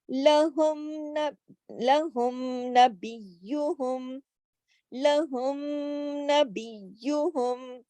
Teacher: ہم نے میم کو پورا پورا اپنے مخرج سے اور اپنی ذاتی صفت غنے کے ساتھ کھلم کھلا اظہار کے ساتھ پڑھنا ہے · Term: اظہار شفوی